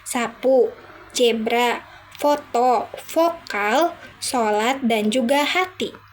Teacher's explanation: Frikatif ada seh, ceh, feh, fe, seh, ha. Bunyi ini dihasilkan dengan menggesekkan udara melalui cela sempit antara dua bagian mulut. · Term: konsonan gesek